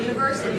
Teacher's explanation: Prolonging the primary stress, reducing the schwas, and the sounds right there in the middle.